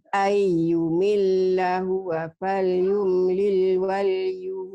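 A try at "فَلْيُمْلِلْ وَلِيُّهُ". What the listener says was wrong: Wali enggak ada double di sini. Waliyuhu. Hu-nya panjang.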